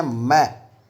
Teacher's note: जब हम बोलते हैं मैं, तो मुंह और नाक दोनों से श्वास वायु का निष्क्रमण होता है, इसलिए ये अनुनासिक कहे जाएंगे।